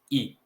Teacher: o E, muitas vezes, no fluxo da fala, nós pronunciamos I.